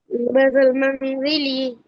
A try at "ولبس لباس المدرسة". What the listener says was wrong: এই মানজিল বলো কেন? ওয়ালাবিসা লিবাস আল মাদ্রাসাতি।